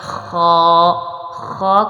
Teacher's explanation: اس کا مخرج جو ہے وہ حلق کا اوپر والا حصہ ہوتا ہے